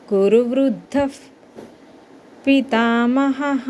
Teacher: తర్వాత పి అనే పదంతో స్టార్ట్ అయింది చూడండి పదం పితామః అని సో ఈ కేసు లో మనం ఇక్కడ ఇక్కడఉన్న విసర్గాన్ని ఎఫ్ కింద పలకాలి